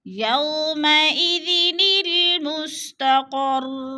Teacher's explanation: مستقر را مشدد ہے اور را کے اوپر پیش ہے، وقف کی صورت میں را کو ساکن کر کے پڑھیں گے